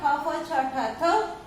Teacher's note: विवार श्वास अघोष और महाप्राण